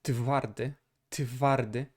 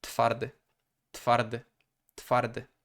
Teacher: the voicelessness of the T forces the W to become the softer f sound